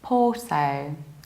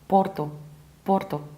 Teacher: In British accent we skip a r and we need to round the final O, even though in Portuguese they pronounce the city like Porto, Porto.